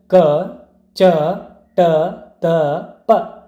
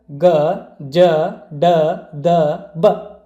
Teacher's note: ಕಡಿಮೆ ಪ್ರಾಣದಿಂದ ಅಥವಾ ಕಡಿಮೆ ಉಸಿರಿನಿಂದ ಉಚ್ಚರಿಸಲ್ಪಡುವಂತಹ ಅಕ್ಷರಗಳೇ ಅಲ್ಪಪ್ರಾಣಗಳು. ಪ್ರತಿ ವರ್ಗದ 1 ಮತ್ತು 3ನೇ ಅಕ್ಷರಗಳು ಅಲ್ಪಪ್ರಾಣ ಅಕ್ಷರಗಳಾಗಿವೆ.